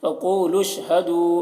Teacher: फ़क़ूलू क़ाफ़ को पुर पढ़ेंगे, क़ाफ़ हुरूफ मुस्तालिया में से है और यहाँ पर देखिए वाव को नहीं पढ़ा जाएगा और ये दोनों अलिफ को नहीं पढ़ेंगे, लाम को शीन के साथ मिलाकर पढ़ेंगे, लाम शीन पेश लुश.